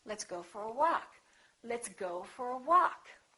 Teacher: Go gets some stress, but walk gets a lot more stress.